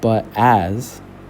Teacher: the as is a little bit more drawn out. So the as in comparison to but is going to be the stressed syllable.